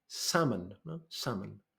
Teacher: the L is completely silent